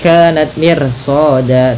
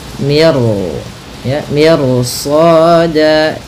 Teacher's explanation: karena datang setelah huruf ro itu huruf isti'la, huruf yang tebal, dan huruf yang pangkal lidahnya terangkat, dan dimana shad ini itu huruf isti'la, maka ro-nya menjadi tebal. Maka miru ya, miru soda, tidak mir soda, tidak dibaca, jangan dibaca kanat mir soda, tapi dia ro-nya tebal. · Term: ro tebal